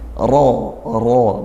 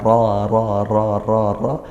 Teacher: Rabah maqrabah ra berharokat fathah kita baca tafkhim tebalkan, kalau tebal maka pangkal lidah dinaikkan. Ro bukan ra tapi ro ya, itulah tafkhim ya, tebal.